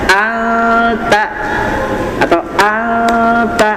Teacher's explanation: Karena nunnya ditahan lebih lama, ikhfanya ditahan lebih lama